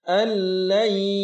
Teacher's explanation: Idgham artinya memasukkan, yaitu memasukkan suara huruf nun sukun pada huruf lam tasydid. Jadi seolah-olah huruf nun sukun tidak ada dan tidak ditahan. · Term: idgham bila gunnah